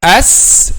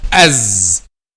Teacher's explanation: the difference between these two letters is just the vibration of the vocal cords. So when we pronounce the letter Zay and we vibrate our vocal cords, this letter is called voiced letter because there is a vibration of the vocal cords.